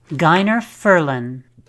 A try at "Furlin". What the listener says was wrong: Well, it's not Furlan, it's Furlin.